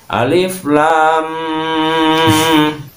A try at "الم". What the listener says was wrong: idgham langsung. Ini mad dulu. Mad dulu, bukan langsung idgham. Karena kita memahami di situ ada la setelah ada alif. Cara memahami bacanya seperti seolah-olah madarid disukun. Lam.